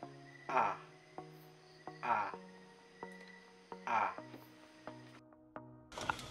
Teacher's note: Ang ponemang A ay nasa gitna at mababang posisyon ng dila.